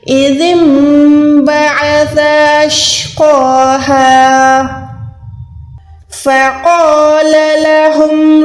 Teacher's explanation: قاف کو 1 سیکنڈ کھینچ کے پڑھیں گے اور یہ موٹا حروف ہے